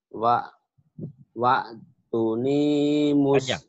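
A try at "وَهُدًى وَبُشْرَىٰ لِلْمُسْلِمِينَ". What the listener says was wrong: Panjang. Waktuni muslimin.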